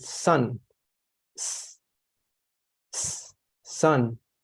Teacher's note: with the letter zoo with sue it makes a vibration and with the letter with s with sun sun it does not make a vibration there therefore it's an unvoiced consonant